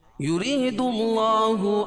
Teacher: یا ساکن سے پہلے را کے نیچے زیر ہے اور را کو باریک پڑھیں گے اور یا مدہ بھی ہوگی، یا ساکن سے پہلے زیر ہو تو یا مدہ۔